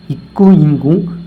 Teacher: நாவின் மேற்பகுதி அன்னத்தை தொடுவதால் தோன்றும்